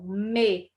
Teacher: outra consoante bilabial, os dois lábios se encontram.